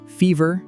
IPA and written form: ˈfiː.vɚ (Fever)